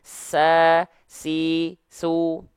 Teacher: ketika dia punya sifat hams kadarnya mengalir nafas · contohnya adalah huruf Sin sa deras aliran nafas dan suaranya